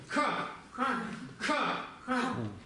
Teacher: Просто произносите К. То же самое, что К, но с придыханием.